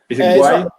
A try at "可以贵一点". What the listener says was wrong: No, because you're saying 怪 like to turn. 右拐, 左拐. Like this 怪 to turn. But this is 贵 way. It's almost like saying way.